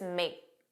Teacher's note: And then make, you didn't hear that k, it was just make. And that makes the pronunciation smoother, which is why it sounds like we're talking very fast.